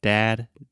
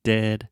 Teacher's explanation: if you look in a mirror when you are saying this when you say dad your mouth is really really open it kind of looks like a square shape and then dead your mouth is much more closed